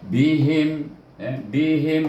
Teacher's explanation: ini baru izhar syafawi, tak ada bunyi apa-apa. Matikan dengan mim, tutup bibir.